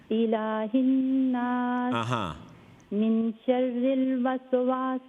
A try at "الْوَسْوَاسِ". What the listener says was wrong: نہیں یہ وس سین قلقلہ نہیں ہے وسواس